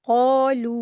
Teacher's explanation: कफ के साथ अलिफ मद्दा है। दो हरकात खींचेंगे।